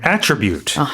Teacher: in the noun form, the stress is on the first syllable.